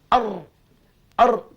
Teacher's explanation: ertinya ra tidak berulang-ulang, tidak banyak gerak banyak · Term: takrir